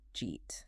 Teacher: did you eat? Which often becomes just jeet.